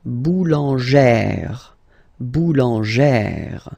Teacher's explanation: plus this accent grave, you pronounce it like E, really open E sound